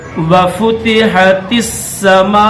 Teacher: میم کے بعد الف مدہ ہے، یہ 5 سیکنڈ اس کو کھینچیں گے، 5 سیکنڈ کھینچ کر الف مدہ کو پھر اس کو حمزہ کے ساتھ پڑھیں گے۔